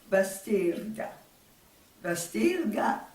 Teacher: ils ont entendu le R qui roulait et qui n'est pas habituel en français. Donc ce R a été transformé à l'écriture en L parce que les consonnes R et L elles font partie d'un même groupe de consonnes qu'on appelle des consonnes liquides.